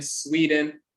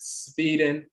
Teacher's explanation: some of them will pronounce it Sweden with a V